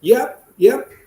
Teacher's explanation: with a rising tone it is actually a question